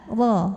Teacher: Ra dibunyikan secara tafkhim karena ra-nya berbaris fathah. Maka ra-nya tebal, lidah belakang angkat. Pangkal lidah angkat.